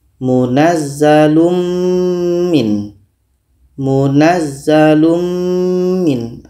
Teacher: Oke telah sempurna membaca mimnya kita baca munazzalum Min munazzalumin Ah mim ini kita dengungkan secara sempurna Kita sudah masukkan tanwin ini kepada mim secara sempurna dan yang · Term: idgham Kamil